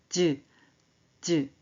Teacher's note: 혓바닥이 센 입천장에 붙었다 떨어져요